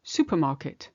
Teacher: again you skip the ER of super supermarket you can hardly hear it in English in French you have to really put it in equally supermarket